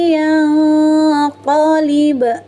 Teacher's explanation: Ada ba sukun di tengah ayat disebut qalqalah sugro. Cara membacanya pantulkan dengan jelas, kemudian pantulannya ringan saja.